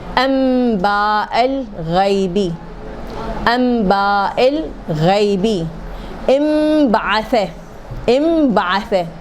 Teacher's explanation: تو جب نون کے بعد بے آ جائے تو نون کو میم بنانا ہے